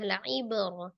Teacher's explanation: La ibratan liman yakhsha. La'ib ba sukun qalqalah dipantulkan qalqalah sughra ya karena diwasal atau di tengah la'ibr. Ro-nya fathah dibaca tebal.